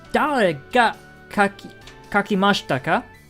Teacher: So instead of saying question mark, like we have in English, we just say ka at the end, with the rising intonation.